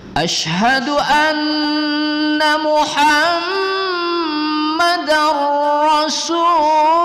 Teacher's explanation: Lamul jalalah ditafkhimkan membacanya ya